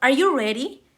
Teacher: Goes up because it is a yes or no question.